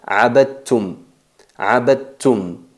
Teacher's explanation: dal y ta salen de la punta de la lengua con el roce con los incisivos superiores, pero a la hora de pronunciarlo fusionamos el dal y la ta, salen del mismo lugar, del mismo punto de articulación, pero tienen diferentes características, y se pronuncia abadtum. · no se percibe el sonido del dal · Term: idgham al-mutajanisain